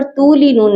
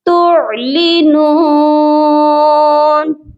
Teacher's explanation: عین کو تا کے ساتھ ملا کر پڑھا جائے گا